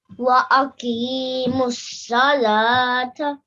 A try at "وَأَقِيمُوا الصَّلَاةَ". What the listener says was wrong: Well done.